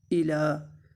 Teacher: حمزہ کے نیچے زیر ہے، اس کو لمبا نہیں کریں گے، لام کے اوپر کھڑی زبر ہے، اس کو لمبا کریں گے ایک الف کے برابر